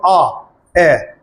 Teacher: अर्धविवर्त मुख द्वार आधा खुलता है। जैसे ए को बोलेंगे तो आपका मुख एकदम नहीं खुलेगा पूरा, ए आधा खुला।